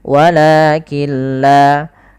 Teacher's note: Apabila ada nun sukun bertemu dengan lam maka cara membacanya kita idgamkan nunnya kepada huruf lam sehingga di situ tidak dikasih harakat artinya nunnya tidak dibaca langsung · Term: idgham